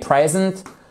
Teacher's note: vous avez l'accentuation ici sur la première syllabe